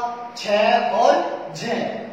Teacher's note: प्रत्येक वर्ग का दूसरा और चौथा व्यंजन, प्रत्येक वर्ग का दूसरा तथा चौथा व्यंजन महाप्राण होता है।